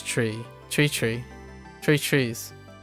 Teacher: to say the th sound three the three it becomes tree tree